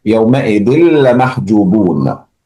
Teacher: there is tanween followed by lam, so we merge it.